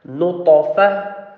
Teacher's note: Ta is the letter of qalqalah, the bouncing letter, so it will bounce.